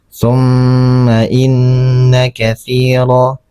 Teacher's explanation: Ini ada hukum bacaan gunah ya. Gunah itu adalah hukum bacaan kita menahan dua harakat ya.